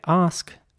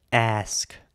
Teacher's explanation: so again it's ask with an r in British English and ask with an air sound in American English